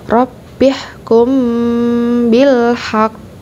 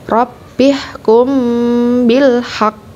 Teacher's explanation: cara bacanya adalah ditekan suaranya ditahan dua harokat lalu diikuti dengan Qalqalah